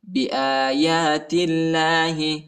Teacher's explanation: اللہ کے نام کو باریک پڑھیں گے کیونکہ تا پر جو ہے زیر آیا ہے